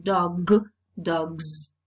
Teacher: the plural morpheme is realized as a voiced sound z, because the previous sound is a voiced non-sibilant sound, as in dog, dogs.